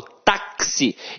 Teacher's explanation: Então, o X aqui tem som de KS. Ou seja, uma letra tem 2 sons. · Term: dífono